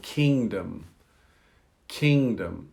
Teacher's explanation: Now, I say it's swallowed because it influences how you pronounce the letter N. So G is important because it influences the N sound, but we don't produce the G.